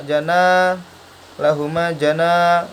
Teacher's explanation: Na-nya di sini panjang karena mad tabi'i, fathah diikuti alif.